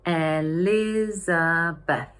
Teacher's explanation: We normally stress the second syllable.